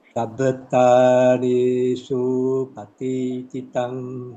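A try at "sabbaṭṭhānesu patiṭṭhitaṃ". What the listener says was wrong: Okay, better, but the su is a bit long, huh?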